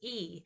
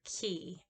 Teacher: And then so it's high E, you hear how high in the mouth it is. It is front. It's produced at the front of the mouth. It's also tense. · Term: high front vowel